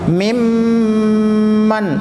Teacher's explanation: नून साकिन के बाद मीम आया, गुन्ना होगा